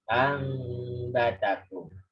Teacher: Jadi bacanya tidak hanya anba atau tidak hanya diganti mim terus langsung lanjut ambatakum, tidak begitu, tapi ditahan. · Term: iklab